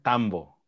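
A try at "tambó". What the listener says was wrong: No. Yeah, because you have the accent at the end.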